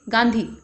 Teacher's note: मुंह का सिर्फ उच्चारण होता है, नाक का हल्का स्वर होता है